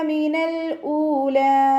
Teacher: ലാമിന് half സുക്കൂന് കൊടുക്കുക. ഹംസയുടെ കൂടെ വാവ് മദ് വന്നു. 2 കൗണ്ട് നീട്ടിക്കൊടുക്കുക.